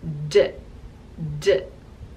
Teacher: using the front of your mouth, your tongue behind your teeth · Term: voiced pair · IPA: /d/